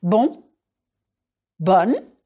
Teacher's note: Remember that bonne is more open.